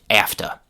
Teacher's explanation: the h sound was elided from have to, and it became just afta.